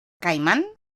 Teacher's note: En el primer caso, la primera sílaba de la palabra caimán tiene 2 vocales, A e I. La primera es una vocal abierta y la segunda una cerrada, y como están en una misma sílaba, forman un diptongo.